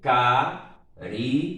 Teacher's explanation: Separando a palavra em sílabas, você vai ter caridade. Veja que o acento tônico recaiu sobre a penúltima sílaba. Logo, paroxítona.